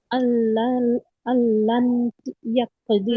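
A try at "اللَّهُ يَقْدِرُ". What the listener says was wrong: আল্লান হবে কেন? নুন সাকিনের পরে ইয়া আসছে। হ্যাঁ আল্লাইয়া কদির কফ কলকলা করতে হবে না।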